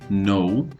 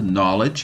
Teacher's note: Eu não pronuncio o K, o encontro do K com o N, não é pronunciado.